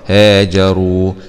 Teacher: راء ضمة مع تفخيم الراء، هاجروا، واو سكون مضي طبيعي، هاجروا.